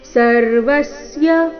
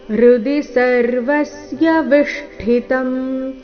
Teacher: ಜ್ಞಾನಗಮ್ಯಂ ಹೃದಿ ಎರಡು ಅಕ್ಷರ ರಸ್ವ. ಸರ್ವಸ್ಯ ವ ಮೇಲೆ ಆಘಾತ